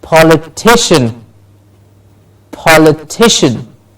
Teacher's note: please notice how much stress I am using to say the word how the pitch goes up how much more effort is said at the stressed syllable very